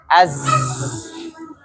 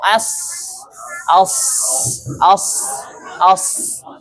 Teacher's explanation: Karena suara itu keluar dari cerah yang sempit antara ujung lidah dengan 2 gigi seri atas dan bawah. Ya, jadi suaranya lewat udara yang sempit sehingga suaranya itu berdesis, ya, yang keluar hanya sedikit. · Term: huruf-huruf sofir